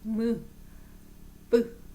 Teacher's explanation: 미음과 쌍 비음은 모두 두 입술 사이에서 나는 소리구나